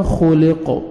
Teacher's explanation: stop کریں گے, قاف ساکن ہو جائے گا